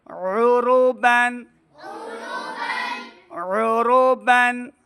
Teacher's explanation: او عین کی آواز آنی چاہیے، حمزہ کی آواز نہیں